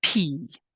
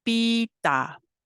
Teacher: The English sounds are often aspirated, but the Blackfoot ones are not. Aspiration is a puff of air that is produced when saying a P, T, or K sound in English. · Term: lack of aspiration